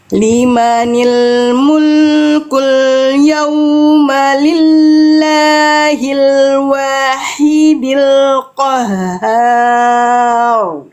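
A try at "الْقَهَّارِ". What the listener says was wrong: Rar jangan ya masih nuansa Eropanya hadir ya.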